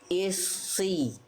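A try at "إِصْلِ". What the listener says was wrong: Dikit lagi. Pangkal lidah huruf shotnya naik sejak awal. Jangan hanya pada saat berharokat, tapi ketika i lalu masuk ke es, nah itu udah langsung naik pangkal lidahnya. Isli.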